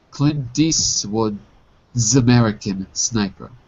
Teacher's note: There's no link between American and Sniper because it ends with a consonant and begins with a consonant. · the S in Eastwood's American Sniper, which is the possessive form, gets passed to the word American